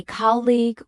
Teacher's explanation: And English learners typically say colleagueu with stress on the second syllable. When native speakers say colleague with stress on the first syllable